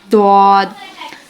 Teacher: ज़बान की करवट जब ऊपर के दानों से मिले तब जाके दौद अदा होता है, जिसको हम हरूफ हाफिया कहते हैं.